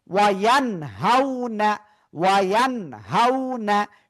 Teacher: ইজহারের অক্ষর হা আসছে, এজন্য আমরা গুন্না ছাড়া স্পষ্ট করে পড়বো